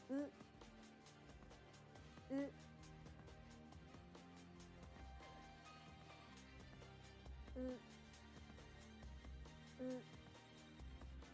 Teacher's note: The lips are more relaxed with the Japanese U sound than the English U.